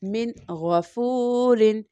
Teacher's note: میم نون کسرہ من، غین فتحہ غا، من غا، فا واؤ دمہ فو، من غافو، را کسرتین رن، من غفورن، من غفورن۔ اگین نون ساکن کے بعد غین لیٹر ہے جو کہ تھروٹ لیٹر ہے، حلقیہ لیٹر ہے، اس لیے اگین ہم یہاں پر بغیر غنہ کیے پڑھیں گے۔ من غفورن۔ اب یہاں پر جو ہم بغیر غنہ کیے پڑھ رہے ہیں یعنی نون ساکن یا تنوین کے بعد اگر تھروٹ لیٹر حلقیہ لیٹر آ جاتا ہے تو وہاں پر ہم اظہار کا قاعدہ لگائیں گے۔